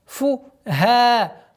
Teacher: Долгота в размере двух огласовок фатха над буквой ха.